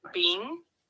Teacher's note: first tone high and steady